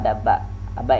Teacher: Ini syafawi ketemuan bibir atas dan bibir bawah